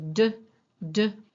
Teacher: the place of articulation is the alveolar ridge. The manner of articulation is that it is a stop. I am stopping the air. And then we have this slight rush of air as we move our tongue away.